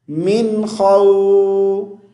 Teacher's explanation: میم نون زیر من, یہاں غنہ نہیں کریں گے, اخفا نہیں کریں گے, کیونکہ آگے حروف حلقی میں سے خا آیا ہوا ہے. تو خا واو زبر خو, من خو.